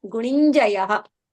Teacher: Gunin plus Jayaha. It becomes the na, half halant na is replaced by halant nya.